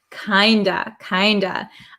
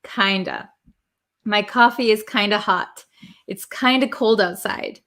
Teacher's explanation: The F, which is a V sound, disappears, and we're left with this O vowel.